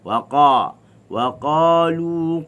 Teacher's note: Pangkal lidah je naik, isti'la.